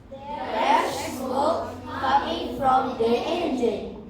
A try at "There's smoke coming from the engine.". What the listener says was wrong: It must come with the appropriate intonation. There's smoke coming from the engine. Not just, there's smoke coming from the engine. Read the sentence like you are explaining.